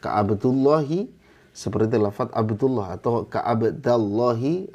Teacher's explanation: lam itu tebal untuk bacaan Imam asim ya dengan riwayat hafz